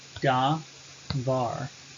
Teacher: We would have davar, which is simply a two-syllable word, da, var. Var, the last syllable, is the tonic, da is pretonic.